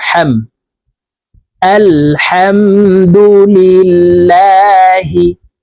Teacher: এখানে হাফ এর উচ্চারণ হলকের মধ্যখান থেকে হবে